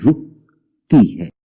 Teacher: رے کے اوپر پیش ہے رو، اور کاف کے اوپر وہ جزم ہوگی جس میں میری آواز آپ کو تھوڑی سی رک کے محسوس ہوتی ہے